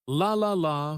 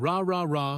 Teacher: for the L Sound the tongue touches the top of the mouth behind the teeth but for the r sound the tongue stays back without touching anything